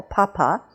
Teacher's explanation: when an English speaker says a P, especially a P in the first position of the word, in initial position, there's a big puff of air that comes out with it.